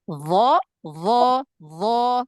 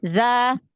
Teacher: sifatul huruf isti'la itu kan terangkat pangkal lidah dan suara naik ke langit